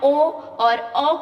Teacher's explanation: ओ और औ का जब उच्चारण करोगे तो आपकी होठ की आकृति गोलाकार हो जाती है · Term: वृत्त मुखी, वृत्तमुखी